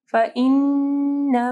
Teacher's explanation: فَإِنَّ نون مشدد ہے، کامل غنہ ہوگا